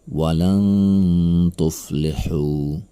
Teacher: Nun mati bertemu dengan huruf ta, maka ini adalah ikhfa. Cara membacanya adalah dengan mendengungkannya selama 2 harokat.